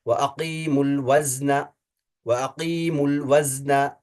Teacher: اب میم کی جو دمہ ہے نا اس کو لام ساکن کے ساتھ ملائیں گے، وَأَقِيمُ الْوَزْنَ، وَأَقِيمُ الْوَزْنَ، دیکھیے اس میم کی پیش کو لام ساکن کے ساتھ ملایا، واو کے سکون کو ڈراپ کر لیا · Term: واو ساکن کو ڈراپ